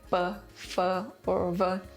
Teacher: Notably, Cherokee lacks labial consonants – sounds pronounced with the lips